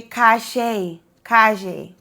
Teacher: Now in Argentina, it sounds like the SH sound, like shh.